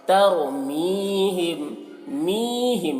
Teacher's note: तर में रॉ को पुर पढ़ेंगे, ता को बारीक, तरमीहिम, मीहिम, मी को खींचेंगे या मद्दा है, तरमीहिम।